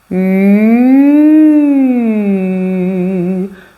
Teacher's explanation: on va articuler un U entre la pointe de la langue qui sera en bas contre les incisives inférieur et le palais dur juste derrière les incisives supérieures. On a un tout petit espace de résonance mais bien tonique et bien dur dans lequel on va venir placer le U.